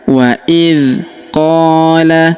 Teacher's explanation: huruf qa kita panjangkan 2 harokat karena terdapat alif di depannya